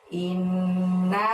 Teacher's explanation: innya ditahan dan ditekan selama 2 harokat ya, karena ada nun tasydid di situ